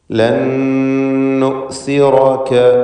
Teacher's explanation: ലൻ എന്നതിലെ സാക്കിനത്ത് നൂനിന് ശേഷമുള്ള നൂനിൽ പൂർണ്ണമായും ലയിപ്പിച്ച് മണിക്കണം. ഇതിന് ഇദ്ഗാം ബിഗുന്ന കാമിൽ എന്ന് പറയുന്നു.